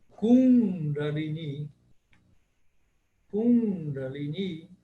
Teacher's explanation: O primeiro I é breve e o segundo I é longo. Ele tem um traço em cima.